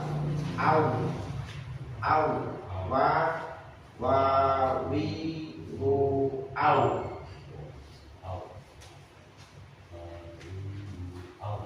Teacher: keluar dari dua bibir dengan memoncongkannya sehingga ada celah untuk mengalir suara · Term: wau